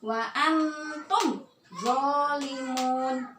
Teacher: Idhar jelas, syafawi di bibir. Jelaskan tanpa dengung. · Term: idhar syafawi